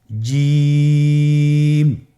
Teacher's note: এর মাখরাজ হলো জিহ্বার মধ্যখান তার বরাবর উপরের তালুর সঙ্গে লাগিয়ে উচ্চারিত হয় আপনারা পিকচারে ছবিতে দেখতে পাচ্ছেন যে জিহ্বার মধ্যখান তার বরাবর উপরে তালির সঙ্গে লাগিয়ে উচ্চারণ করতে হয়।